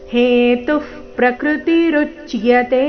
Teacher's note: ಪ್ರಕೃತಿ ಪ್ರಮೇಲೆ ಆಘಾತ ಕೊಡೋ ಅವಶ್ಯಕತೆ ಇಲ್ಲ